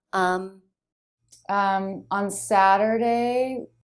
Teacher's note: on Saturday, On Saturday, she's speaking slowly here. She's drawing out the word. Her pitch goes up so that I know she's not done talking. She is going to figure something out to tell me.